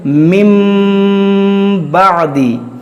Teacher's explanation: آپ سمجھتے ہیں نون ساکن یا تنوین کے بعد حرف با آ جائے تو اقلاب ہوگا، یعنی نون ساکن اور تنوین کو میم سے بدل کر اخفا کریں، یعنی غنہ کر کے پڑھیں. یعنی نون ساکن یا تنوین کے بعد حرف با آ جائے، صرف ایک حرف، تو وہاں پر ہم اقلاب کا قاعدہ لگا کر غنہ کریں گے. · اس نون کو ہم میم سے بدل کر پڑھیں گے